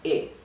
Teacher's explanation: not e it's not e it's flat okay e it's flat there is no variation in the tone right it's one tone one sound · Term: very flat vowels